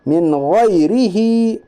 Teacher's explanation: नून साकिन के बाद हुरूफ हल्की के 6 हरफों में से खा है, इसलिए इजहार हल्की होगा, यानी नून साकिन की आवाज़ को ज़ाहिर करके बिल्ला गुन्ना के जल्द पढ़िए, इसे इजहार कहते हैं।